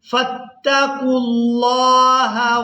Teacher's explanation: اس سے پہلے واو اور الف آپ دیکھ رہے ہیں، یہ رسم الخط ہیں، ان کو ادا نہیں کریں گے۔ قاف کو لام مشدد کے ساتھ ملائیں گے